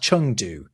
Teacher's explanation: When you see eng in Mandarin, it's actually an ung sound.